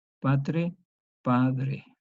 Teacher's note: Una consonante sorda seguida de R. Por lo tanto, se va a tratar como intervocálica. Sonoriza en D.